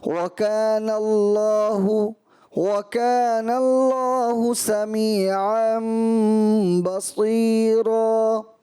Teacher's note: اللہ کا لام اس سے پہلے زبر ہے، اس میں جلالت. مزید اس کو پر کرتے تو اور اچھا خوبصورت ادا ہو جاتا